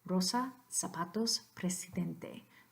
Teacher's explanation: there is not a single Z sound, the voiced fricative there